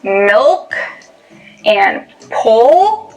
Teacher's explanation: In contrast to the light L, when you produce the dark L, the back of your tongue bunches